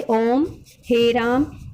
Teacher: जिन स्वरों के उच्चारण में 3 मात्रा का समय लगता है उन्हें प्लुत स्वर कहते हैं